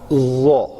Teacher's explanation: ظا کے لیے منہ گول نہیں ہوگا, لیکن اس کو ادائیگی جو ہے نا وہ پر کرنی پڑے گی. اس کے وہ کہیں ان بیٹوین گلائی کے اور یہ چپٹے کے واپس تھوڑا ہونٹ جو ہے نا نارمل ہو جائیں گے.